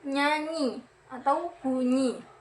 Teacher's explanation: Seperti contoh, bunyi NY terjadi karena lidah menyentuh langit-langit